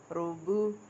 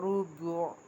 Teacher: را کے اوپر پیش ہے اس لیے اس را کو پر پڑھیں گے